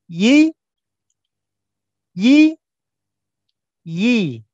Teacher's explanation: Seperti sebelumnya, seperti huruf jim dan huruf shin, maka huruf ya sama makhrajnya, yaitu tengah lidah bertemu dengan langit-langit di atasnya